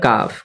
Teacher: কাফ হচ্ছে জীবের গোড়া হতে একটু বাড়িয়ে আগে বাড়িয়ে উপর তালু সঙ্গে লাগে উচ্চারিত হয়